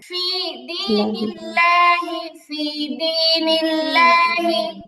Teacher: আল্লাহ শব্দের ডানে জের আছে, তাহলে লামটা পাতলা হবে